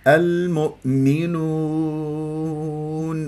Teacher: اضم الشفاء الى الامام جيدا واضع راس اللسان في المنطقه اللحميه اسفل الثنايا السفلى وارفع قصر اللسان حتى لا تصير عندي غنه فيها